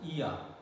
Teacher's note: See, tongue starts where? Front, close position, but it ends in central, maybe half close position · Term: vowel glides